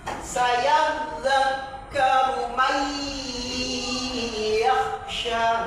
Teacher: Nun mati bertemu dengan ya, bacaan idghom bighunnah, mendengung yang lama ya. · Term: idgham bil gunnah